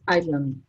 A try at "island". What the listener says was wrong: Island. You don't pronounce the S. Island. Island.